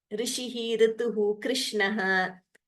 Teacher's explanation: So there that R should be heard clearly. It shouldn't be heard as either Ru or as Ri. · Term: Rikara